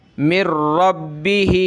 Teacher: उस नून को नहीं पढ़ते, बल्कि मीम को डायरेक्ट रा के साथ मिलाएंगे, रा को बा के साथ।